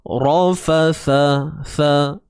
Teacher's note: ra tebal, fa dengan sa ni nipis.